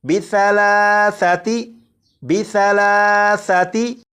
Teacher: ثا کو نرمی سے پڑھنا ہے، یعنی سی ٹی کی آواز کے بغیر پڑھنا ہے